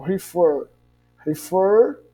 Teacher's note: nós temos aí a sílaba tônica na última sílaba